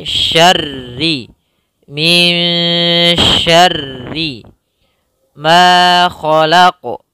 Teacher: Ro di sini ro tasydid kita tebalkan. Syarri, ro-nya dua tebal, yaitu ada dua huruf. Yang ro pertama sukun, kalau ada huruf tasydid maka itu tandanya hurufnya dua.